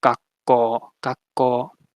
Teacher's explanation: that C is the underspecified consonant, and it basically just copies whatever consonant follows it. So here it becomes a K sound or a velar sound, and you can either write it as 2 Ks or you can use the geminate diacritic.